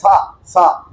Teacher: ನಾಲಿಗೆ ನಾಲಿಗೆಯ ಗಾಳಿ ಹಲ್ಲಿಗೆ ಬರುವ ಹಾಗೆ ಹೇಳಿದರೆ ಸ ಇದು ದಂತ್ಯ ಸಕಾರ ದಂತದಿಂದ ಗಾಳಿ ಹೊರಗೆ ಬರುವಾಗ ಬಂದ ಸಕಾರ ದಂತ್ಯ ಅಂತ ಕರೀತಾರೆ